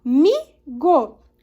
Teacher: está na penúltima sílaba aqui que é a sílaba tônica da palavra amigo